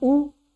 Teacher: ऊ को बोलने के लिए हमें अपने ओंठ को गोल करना पड़ता है, इसीलिए इसको क्या कहा है, ऊ। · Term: ओष्ठ वर्ण